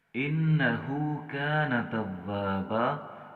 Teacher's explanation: یہاں پر نون مشدد پر ہمیشہ غنہ ہوتا ہے، یہاں غنہ کریں گے۔